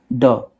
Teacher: ड क्या होता है? मूर्धन्य अल्प प्राण और घोष वर्ण होता है।